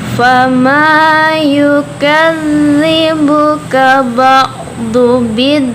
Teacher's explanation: ada mad tabi'i karena ada alif sebelumnya fathah di huruf mim. Jadi cara bacanya panjang, 2 harokat.